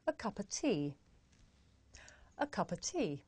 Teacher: the words a and of become schwa